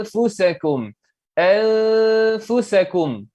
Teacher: Ini memang susah sedikit, tapi bagi mereka yang sudah belajar, alhamdulillah, mungkin ini suatu murajaah ataupun ulang kaji bagi kalian. Jadi di sini huruf fa ni tipis, jadi dengungnya itu tipis. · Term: ikhfa